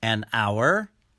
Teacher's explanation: in the word hour the h is silent so the beginning sound of the word hour is a vowel sound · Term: silent h